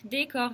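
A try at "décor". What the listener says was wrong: Только де не бывает де, де твердое. Декор.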